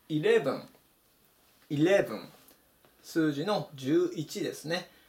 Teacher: 強く読むのがこのレの部分になります